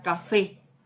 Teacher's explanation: termina en una vocal E tónica. Por lo tanto, nosotros tendríamos de que ponerle la S al final.